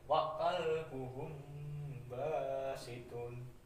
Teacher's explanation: Huruf ikfa safawi itu cuma satu, yaitu b ya. Jadi ketika ada huruf mim mati bertemu dengan b itu dibaca samar-samar ya, dan disertai dengan dengung. Jadi samar dan dengung ya, mendengung.